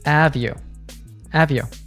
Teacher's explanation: She links have and you together, and it sounds like one word.